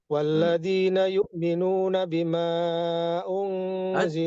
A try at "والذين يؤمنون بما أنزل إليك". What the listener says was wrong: Jangan jangan dibaca 4 harokat. Majaisnya dibaca 2 harokat. Sama kayak Tariq Raudatul Muadil.